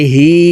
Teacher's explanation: হার নিচে খারা জের আছে তাই নিচের দিকে ধাবিত করে এক আলিফ টানে পড়বো